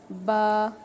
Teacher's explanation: आप ऊपर वाले होंठ का जो गीला वाला हिस्सा है निचले वाले होंठ के गीले हिस्से से चिपक रहा है, मिल रहा है · दोनों होंठों का गीला वाला हिस्सा, तर वाला हिस्सा आपस में मिल जाता है तब जाके हुर्फ़ बा अदा हो जाता है।